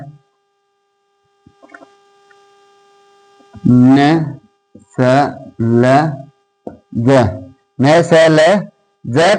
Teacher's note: न स ल ज, न स ल ज का उच्चारण करते समय, का उच्चारण करते समय जीभ वत्स भाग, जीभ या जीवा, जीभ या जीवा वत्स क्षेत्र को, वत्स क्षेत्र को स्पर्श करती है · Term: वर्त्स्य